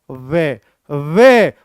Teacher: दंत प्लस होठ अर्थात इसको दंतष्ट कहता हूं